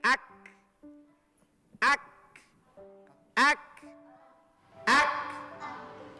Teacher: kalau kaf itu biasanya kalau karena dia sifat hamas ada keluar desisan angin.